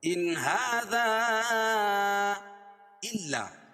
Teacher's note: ان هذا الا، ہاذا الگ کلمہ ہے اور الا الگ کلمہ، تو یہاں مد منفصل ہوگا. مد منفصل کو مد جائز بھی کہتے ہیں اور اس کی مقدار توسط ہے اور قصر بھی جائز ہے